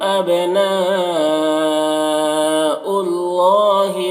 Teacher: یہاں پر حمزہ واو کی شکل میں ہے۔ اللہ مشدد حرف ہے تو پیچھے والے متحرک حرف حمزہ سے مل کر پڑھا جائے گا، اور اللہ کو پر پڑھیں گے، کھڑا زبر ہے، ایک الف کے برابر کھینچیں گے۔ · نا میں جو مد ہے مد متصل ہے، اسے 3-4 الف کے برابر کھینچ کر پڑھتے ہیں